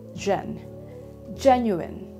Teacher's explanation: we must always notice which syllable is being stressed so for this word it's the first one